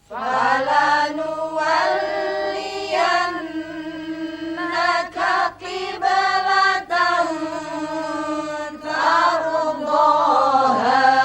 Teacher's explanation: Di sini ada ra sukun didahului dengan fathah, berarti bacaan tafkhim.